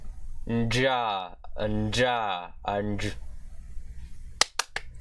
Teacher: Pre-nasalized, voiced, palatoalveolar sibilant affricate consonant.